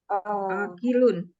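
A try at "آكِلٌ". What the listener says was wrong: Panjang ya A-nya ya.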